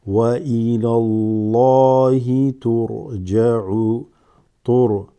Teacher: There's a fatha before the name of Allah subhanahu wa ta'ala. So this lafdhul jalala, ismul jalala, that great name of Allah, is read full mouth.